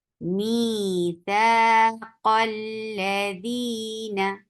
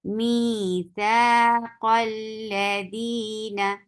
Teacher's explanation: میثاق الذین، یہ دیکھیے اب ہم نے ادھر ورڈ لکھا اور اس ورڈ کو اگلے ورڈ سے ملا رہے ہیں، تو اس ورڈ کے شروع میں جو حمزۃ الوصل تھا ہم نے اس کو نہیں پڑھا بلکہ پچھلے حرف کو اٹھا کے اگلے حرف کے ساتھ ملا دیا اور یہ حمزۃ الوصل ساقط ہو گیا.